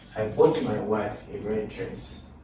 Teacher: Notice the emphasis is on wife. Emphasis is also on I. Those are the two subjects there. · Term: emphatic stress